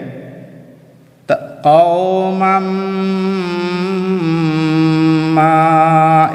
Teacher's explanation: যে নুনে তসদি থাকে নুন মুশাদ্দদ মিম মুশাদ্দদ বলে যেখানে গুন্না করা ওয়াজিব তাই এখানে গুন্না অর্থাৎ একটু সময় থামিয়ে যেতে হবে